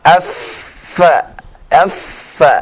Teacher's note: huruf fa ya itu dari gigi seri yang atas ya bertemu dengan perut bibir yang bawah